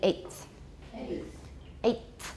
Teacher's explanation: The T is going to be dental because it's influenced by the th.